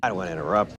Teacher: Of course T's there, but it's just not aspirated. And thus it sounds like it's not there. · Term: drop T